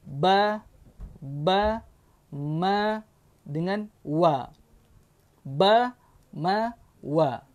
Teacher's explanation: betul-betul bibir jumpa bibir. Bibir atas jumpa dengan bibir bawah. Keluar 3 huruf, iaitu ba, ma dengan wa.